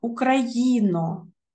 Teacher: о ненаголошений але він не може бути наближеним у кінці слова тому це чіткий о